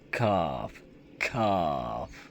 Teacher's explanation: ज़बान की जड़ करीब और उसके मुकाबिल तालु से अदा होता है, यानी ज़बान की जो जड़ है उसके पहले वाला ज़बान का हिस्सा उसके अपोज़िट ऊपर तालु पर लगेगा और ख की आवाज़ अदा होती है। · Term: काफ